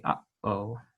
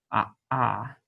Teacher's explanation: For the aleph, this is a glottal stop, and same sound as when we say uh-oh. It just is a stop in the throat like that.